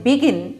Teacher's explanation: Two vowels, so two syllable word. But the stress is the second syllable, gin.